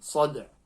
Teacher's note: the dal qalqala and then just a hint of the ayn at the end